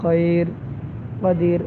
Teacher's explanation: وقت کی صورت میں ہم خیرن کو خیر پڑھتے ہیں تو را کو ساکن کر دیتے ہیں